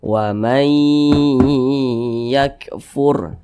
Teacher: waman yakfuru jangan tapi dibaca wamay yakfur nah seperti itu didengungkan didengungkan itu suaranya itu kita tahan atau kita panjangkan panjangnya itu dua harakat